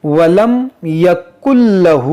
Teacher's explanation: यह 'नून' 'लाम' में विलीन हो जाएगा।